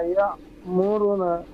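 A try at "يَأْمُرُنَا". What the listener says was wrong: ইয়া মুরু, টান দিতে হবে।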